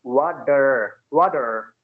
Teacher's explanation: So according to the rule, Americans will speak this ta as a da and not ta. So they will say this is water, water, and the Oh, R that it's comes like in the end D.